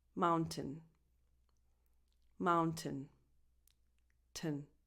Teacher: A small sound, a schwa sound, comes out naturally, but you don't have to think about it. Just go from the T to the N.